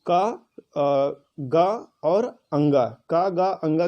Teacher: तो ये प्राण के आधार पर जो वर्ड होते हैं वो 2 प्रकार के होते हैं, पहला अल्प प्राण और दूसरा महाप्राण। ये अल्प प्राण क्या होते हैं, इसमें हकार नहीं होता है